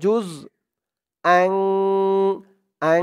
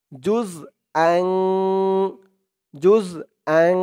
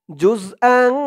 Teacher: এই যে তানবিনের পরে ইকফার 15 হরফের এক হরফ সা আসছে, তাই এখানে ইকফা অর্থাৎ নাকের ভিতরে লুকিয়ে গুন্না করে পড়তে হবে